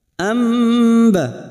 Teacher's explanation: membalikan nun atau tanwin menjadi mim dengan merapatkan bibir tanpa menekan disertai dengung selama 2 atau 3 harokat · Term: iqlab